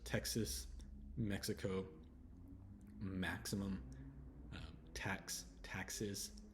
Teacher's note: but the X sound it sounds like KS